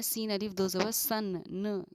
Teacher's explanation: नून की जो आवाज़ आ रही है, इस पर हमारा कुछ देर रुकना इख्फ़ा कहलाता है